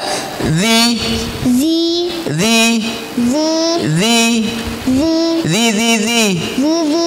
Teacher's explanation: Ujung lidah dengan gigi seri atas. Keluar sedikit. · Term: huruf zal